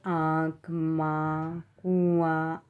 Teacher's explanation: मुंह से अधिक श्वास निकलती है और नाक से कम निकलती है · आँख, माँ, कुआँ आदि शब्दों में हम क्या करते हैं, अनुनासिक ध्वनियों का इस्तेमाल करते हैं